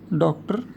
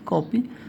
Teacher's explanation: आ तथा ओ के बीच की ध्वनि है